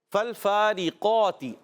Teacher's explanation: تا کے نیچے زیر آنے کی وجہ سے حرکت ہے، اب اس کو نہیں کھینچیں گے